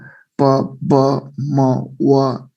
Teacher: Bilabial भन्ने बित्तिकै प हैन, प ब म व, these sounds are what bilabial sounds हैन. Then प ब म bilabial हैन, two lips are involved